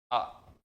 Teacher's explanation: सबसे ज्यादा जो मुख ओपन होता है वो होता है आ के दरमियान